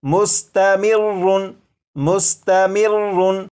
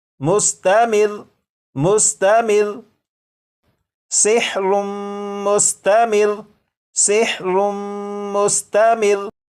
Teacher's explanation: लेकिन जब वक्फ में पढ़ेंगे तो ये जो लफ्ज़ है इस लफ्ज़ के रा के ऊपर जो तशदीद है इसे तो पढ़ेंगे, लेकिन रा के ऊपर जो 2 पेश हैं इन्हें ख़त्म कर देंगे